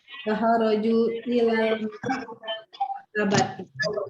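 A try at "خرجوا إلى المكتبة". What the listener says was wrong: Ahsanti.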